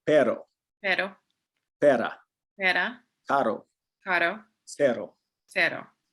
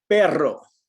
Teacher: If it's a singular R that comes in the middle or at the end of the word, it does not get rolled.